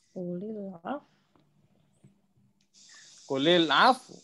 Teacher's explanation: U-nya itu kayak u, kayak bisik-bisik gitu loh.